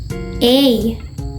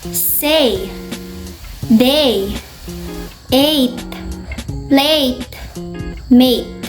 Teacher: This sound is actually a diphthong, a combination of 2 vowel sounds. It starts with a mid-front unrounded vowel and glides toward a high-front unrounded vowel. This sound is made by your lips moving sideways, and the mouth slightly wider than when we made E sound.